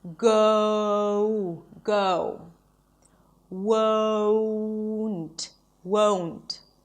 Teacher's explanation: as if you're actually adding a W sound